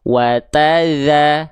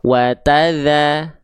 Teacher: Maka ketika kita praktekkan teman-teman di sini, ya, vokalnya vokal A karena dia berharokat fathah, ya, wataza, pastikan ngalir suaranya ya, jangan watada, jangan digigit. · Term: huruf dzal